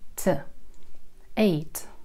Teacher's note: На конце «т», который произносится на альвеолах. Альвеолы – это бугорочки, которые находятся за зубами.